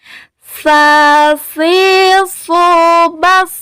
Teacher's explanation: ketika dia sukun, dia mesti dibaca hamas, keluar angin ketika kita membacanya.